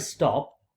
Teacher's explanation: whereas in the word stop ta is not aspirated